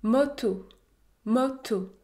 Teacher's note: mot moto moto le premier haut se situe entre les deux il est un peu fermé un peu ouvert il est au milieu